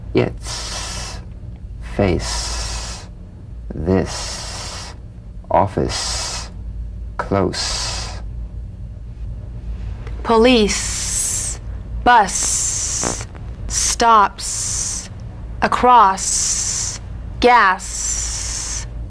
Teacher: unvoiced s sound fricative tongue to gum Ridge the S is like the Z except it's unvoiced